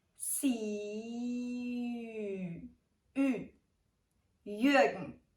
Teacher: try to say the I as in see and then round your lips. The resulting sound is the Ü sound.